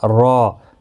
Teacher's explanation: وقف کی صورت میں یہاں پر دو زبر کو بدل کر ایک زبر کے ساتھ وقف کریں گے. الف مدہ بنے گا را، ایک الف کی مقدار کے برابر کھینچ کر وقف کریں گے. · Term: وقف بالابدال